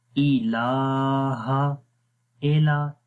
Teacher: اے نہیں پڑھنا، ای پڑھتے ہیں، ای لمبا بھی نہیں کرنا